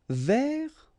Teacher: you don't pronounce the final S